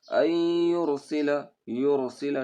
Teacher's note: اس کو را کو پر کر کے پڑھیں گے